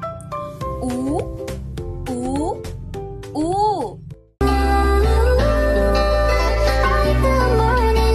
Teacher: Panghuli, letrang U, palikod, pataas, pabilog.